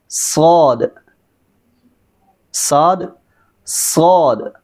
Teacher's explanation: इसको मोटा अदा करना है और इसके अंदर सीटी की आवाज़ है